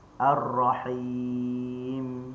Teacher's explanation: Sebab mim tu adalah mim sukun. Dia hanya ada aslul ghunnah. Dia tidak ada penyebab yang menyebabkan kita perlu dengun dua harakat.